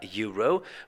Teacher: But if you have a closer look at the pronunciation, and if you listen to actually how you say the word, you will notice that the first letter that comes out of your mouth when you pronounce the word euro is not a vowel, but it's the Y.